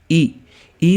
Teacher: ई में जीभ का अगला भाग आगे आ रहा है, तो यहाँ पे देखो अग्र भाग कौन सा हो जाएगा, अग्र स्वर कौन सा हो जाएगा, ई।